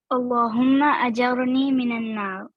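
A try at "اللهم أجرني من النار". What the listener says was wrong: आमीन, बारकल्लाहु फीक।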